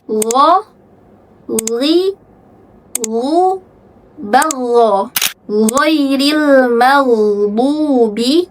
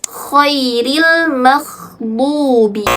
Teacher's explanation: Tidak ada hams ketika huruf lo disukunkan.